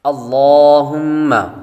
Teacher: یہاں پر لفظ اللہ کے لام کو پر پڑھیں گے